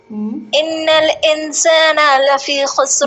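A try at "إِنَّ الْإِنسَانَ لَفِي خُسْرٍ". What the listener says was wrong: نا کو نہ کھینچیں.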